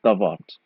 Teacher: P, when it is weakened, it's always a V.